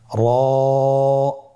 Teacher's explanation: র হরফটি এখানে আমরা পর উচ্চারণ করব। মোটা করে উচ্চারণ করব। এবং র হরফটি এক আলিফ টেনে পড়ব। · জিহ্বার আগার উল্টা পিঠ তার বরাবর উপরে তালের সঙ্গে লাগিয়ে উচ্চারিত হয়